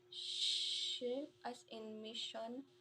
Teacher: voiceless post-alveolar fricative sh, as in mission